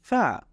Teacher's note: আমরা যদি দাঁতের আমাদের আগার সাথে নিচের ঠোঁটের আগা মিলাই তাহলে এভাবে উচ্চারণ হবে